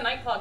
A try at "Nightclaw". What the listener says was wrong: Sound like you said night clock.